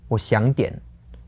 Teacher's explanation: so that's like half a third tone a second tone and then a third tone again